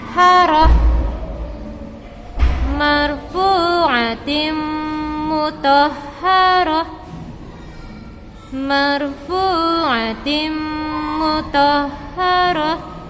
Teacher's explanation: Kalau ta marbuta maka dia diganti ya atau berubah menjadi huruf H.